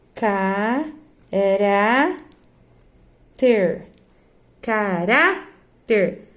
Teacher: é uma paroxítona, ó, sílaba tônica penúltima.